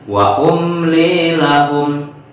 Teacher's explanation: Jadi tidak boleh ditahan. Dan huruf mimnya harus jelas. Wa umli, bahwasanya ada mim mati di situ.